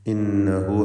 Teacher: ഹാഉ ദ്വമീർ ആവർത്തിക്കുന്നു ഈ വചനത്തിൽ. അതിൻ്റെ ദീർഘം 2 ഹറക്കത്തിൻ്റെ അളവിലാണ്. മദ്ദുസ്സിലത്തി സുഗ്റ എന്ന ദീർഘമാണ്.